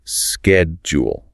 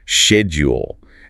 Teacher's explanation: In American English, it's almost always schedule. It starts with a hard sked sound. In British English, it's often schedule. It starts with a soft she sound.